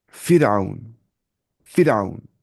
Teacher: تو را کو باریک پڑھنا ہے. جیسے فرعون، فرعون. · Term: را باریک